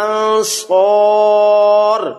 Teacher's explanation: صاد کو لمبا بھی کیا کیونکہ الف مدہ آ گیا، اور آگے وقف آ گیا ہے تو وقف کی وجہ سے یہاں مد عارض وقفی، اس کو اور لمبا کیا جا سکتا ہے، من انصار، تو اس کو یاد رکھنا ہے۔